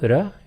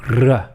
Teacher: In Spanish, there's a flap R like R and a trilled R like R